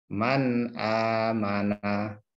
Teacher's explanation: Kalau ada nun sukun atau tanwin bertemu salah satu huruf ini, hamzah ha, kha, ain, ghain, ha, maka dibaca idhar halqi atau dibaca jelas, tidak ada dengung atau tidak ditahan, tapi dibaca terang atau jelas